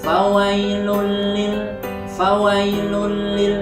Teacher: Ghunnah ingat arti idgham adalah memasukkan bilagunnah dengan tidak berdemo jadi ketika membaca lafal fawailul Lil mushollin tidak boleh berdengung harusnya adalah fawailulil fawailulil enggak boleh fawailul boleh harus fawailulil tuh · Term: idgham Bila Ghunnah, idgham bila gunnah